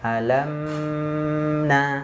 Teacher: Ternyata berarti huruf mim sifat yang kedua dia tawassut bainiyah. Makanya ketika kita membaca huruf mim di sini yang sukun tidak boleh terpantul. Kenapa? Karena karakternya sifatnya dia bainiyah, mengalir.